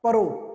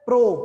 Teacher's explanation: ਜਦੋਂ ਮੈਂ ਕਹਿ ਰਿਹਾ ਨਾ ਪ੍ਰੋ, ਪੱਪੇ ਦੇ ਨਾਲ ਹੀ ਰਾਰੇ ਦੀ ਸਾਊਂਡ ਆ ਰਹੀ ਹੈ, ਤਾਂ ਮਤਲਬ ਕੀ ਹੈ, ਇਹਨਾਂ ਦੋਹਾਂ ਦੇ ਵਿਚਕਾਰ ਕੋਈ ਸਵਰ ਨਹੀਂ ਲੱਗਿਆ। ਬਸ ਇੱਥੇ ਹੀ ਹੈ ਪੰਜਾਬੀ ਦੇ ਵਿੱਚ ਜਿੱਥੇ ਦੋ ਵਿਅੰਜਨਾਂ ਦੇ ਵਿਚਕਾਰ ਕੋਈ ਸਵਰ ਨਹੀਂ ਆਉਂਦਾ।